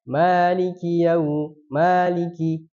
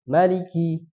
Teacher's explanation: ma dibaca panjang itu ada di riwayat Hafs. Ya, Hafs itu dibacanya panjang, maliki. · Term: bacaan panjang